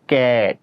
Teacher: আমরা ইংরেজিতে উচ্চারণ করার সময় ক্যাট বলি, অ উচ্চারণ করতেছি না, ওই জন্য হসন্ত দিয়েছি।